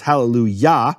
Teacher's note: yah is always the emphasized syllable